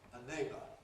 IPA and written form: ə ˈneɪbə (a neighbour)